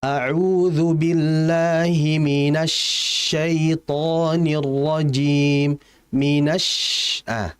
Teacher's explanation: Akan terdengar jelas suara udaranya atau tafasyinnya ini disebabkan menyebarnya udara tersebut. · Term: sifat tafasyih